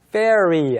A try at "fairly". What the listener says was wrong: 네, L 발음하지 않고 그냥 fairy, 즉 L을 빼게 되면 다른 게 되죠.